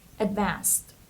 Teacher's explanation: the stress is on the second syllable so it's Advanced and the Ed here we pronounce it like T